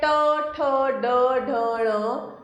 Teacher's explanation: ट वर्ग। इसका उच्चारण स्थान है मूर्धा